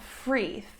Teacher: for Russian speakers, a word like 3, the number 3, becomes like an F sound, free. 3 becomes free.